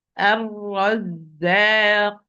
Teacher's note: First ra is sakin, so give it its time بينية, and it's مفخم, it's heavy, because the second ra is having fatha. If the ra is mushaddada, the first ra, which is sakina, take the same hukm or the same rule of the second ra.